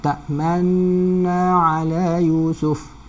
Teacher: sambil idgham, sambil muncung ke mulut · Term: Idgham beserta ismam